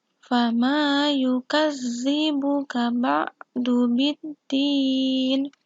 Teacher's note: Kemudian ayat yang ke-7, fama, hukum bacaannya adalah mat tabi'i fathah diikuti dengan alif, membacanya panjang di 2 harokat.